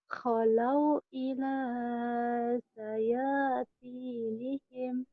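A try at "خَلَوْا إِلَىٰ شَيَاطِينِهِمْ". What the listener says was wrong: Kalau ila sayat. Shin ya. Kalau ila syayatinihim.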